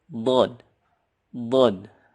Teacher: kalau dod ini pinggir lidah dengan gigi geraham.